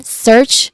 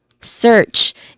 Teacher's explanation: It starts with a hissing sound and ends with the sound that ch makes